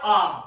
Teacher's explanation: স্বরধ্বনি মৌলিক এবার উচ্চারণ করো আ জীবটা মুখের মধ্যেখানে অর্থাৎ সেন্ট্রাল তাই আ টা কেন্দ্রীয় স্বরধ্বনি